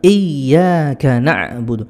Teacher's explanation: Iya, ya-nya harus ditekan. Karena kalau ya-nya tidak ditekan artinya nanti berbeda